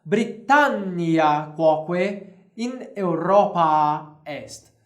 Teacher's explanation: Então nós temos uma consoante dupla, nós aumentamos o tempo dessa pronúncia aqui.